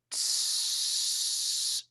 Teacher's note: you have to have this tiny little gap between the alveolar ridge and the tip of the tongue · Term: s sound